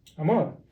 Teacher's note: you stress the last syllable